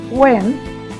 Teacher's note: আমার মনে আছে অনেকেই আমরা এরকম ভুল করে থাকি, আমিও বলতাম একসময়, কিন্তু সঠিক হবে ওয়েডনেসডে। একটু খেয়াল করলে দেখবেন আমরা এখানে ডি উচ্চারণ করছি না